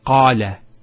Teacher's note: Notice the elongation of the A sound. Qala. Not qala, qala.